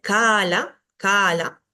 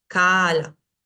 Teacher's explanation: fíjate que acá tengo una a larga y una a corta entonces tengo que diferenciar entre esos dos sonidos